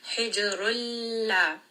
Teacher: So just go straight from that ra into the lam sukun. Hijrulla. This is a 2-count mad.